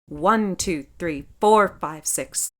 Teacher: More stress on the first of each group of three. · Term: dactylic hexameter